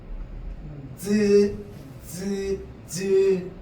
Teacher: 공기가 흐르는 통로를 한번 막았다가 조금만 열어주고 마찰을 시키는 거야. 알겠죠? 자, 막았다가 조금 열어서 마찰을 시키는 걸 파찰이라고 합니다. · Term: 파찰음